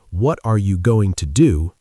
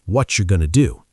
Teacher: For example, what are you going to do sounds more like what you're gonna do. The words going to reduce to gonna, want to reduce to wanna. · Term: reductions